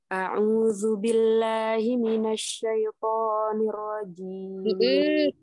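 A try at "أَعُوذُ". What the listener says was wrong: A'udzu ya, ujung lidahnya keluar dikit. Lidahnya keluar dikit ya. Zu, jangan zu, tapi zu.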